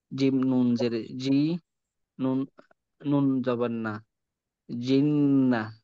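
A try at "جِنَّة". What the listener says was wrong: আপনি বানান করে যখন প্রথম উচ্চারণটা করলেন ওই উচ্চারণেও যেন গুণ থাকে। যেমন ধরেন জিম নুন জের ওয়াজিব গুন্না, জিন, নুন জবর না, জিন, না। যেহেতু আমি প্রথমে বানানের সঙ্গে একবার পড়ি, দ্বিতীয়বার আবার যুক্ত করে পড়ি, তো গুন্না দোনোবারই করব।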